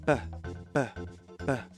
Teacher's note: Es cuando se acumula el aire dentro de la boca y se deja salir en una pequeña explosión. Así se crea el sonido de la P. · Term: bilabial y oclusiva